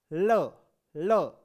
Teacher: है वो मुख के ऐसे आती है बाहर, ऐसे ल, ल, जब आप ल का उच्चारण करते हैं तो जीभ से, जीभ के साइडों से जो है हवा बाहर आती है , इसलिए इसे बोला जाता है आपके पास पार्श्विक व्यंजन ल,